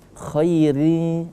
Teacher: Ketika huruf ra berbaris bawah ri seperti itu maka tidak boleh dibaca ri tidak, tapi ri tipis.